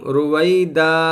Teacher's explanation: جب آخر میں ٹھہریں گے تو دو زبر ایک الف سے بدل جائے گا